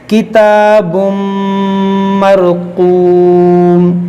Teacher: तनवीन के बाद मीम, यहाँ पर भी इदगाम होगा